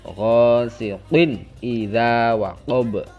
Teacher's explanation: Kemudian ada ghasiqin idza, siqin qaf tanwin kasroh tanwin bertemu hamzah, itu adalah izhar atau bacaan jelas, izhar halqi, itu dibaca jelas.